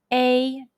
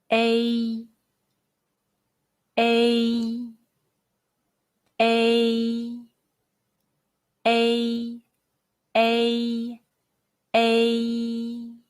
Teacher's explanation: when you pronounce the mandarin chinese a sound the lips are spread and the mouth is half opened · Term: the final a